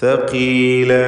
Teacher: ഇഖ്ഫ ഹഖീഖി മണിക്കലിൽ തർക്കീഖാണ്, മുറക്കക്കായ ഇഖ്ഫാണ്. യൗമൻ സഖീല, സഖീല എന്ന് പറയുമ്പോൾ ഖാഫിന് കുറഞ്ഞ തഫ്ഖീമാണ് ഉണ്ടാവുക. കസ്റായതുകൊണ്ട് ഖാഫ് തഫ്ഖീം ചെയ്യുന്നു, പക്ഷേ കുറഞ്ഞ തഫ്ഖീം മാത്രമാണ്.